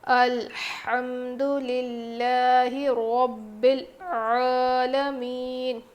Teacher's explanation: نہیں پڑھیں گے، لام کو باریک پڑھیں گے، رو موٹا ہوگا، عین کی آواز حلق کے بیچ کے حصے سے آئے گی اچھے سے صاف